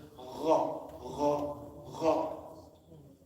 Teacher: But in Arabic, ghayn comes from your top of your throat. So it's gha.